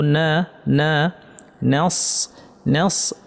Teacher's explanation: নাস নস বলবো না, নুনকে ভারী করব না, নুনকে পাতলা রাখবো।